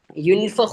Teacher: യുൻ എന്ന് പറയുന്ന നൂനിന്റെ ശബ്ദം വ്യക്തമാകാൻ പാടില്ല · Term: മറച്ചു മണിച്ച്